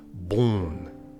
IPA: bõn